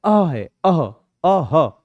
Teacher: जाता य जो बिंदिया है इनको कहते हैं आपका विसर्ग और इनके साथ में क्या होता है आधे ह की आवाज जुड़ जाती है